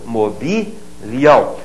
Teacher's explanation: Agora, mobiliamos, mobiliais. E na terceira do plural, o i volta a ser tônico.